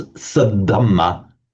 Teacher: So the sat dhamma becomes sadhamma by Sandhi. The t becomes a d with the following voiced consonant.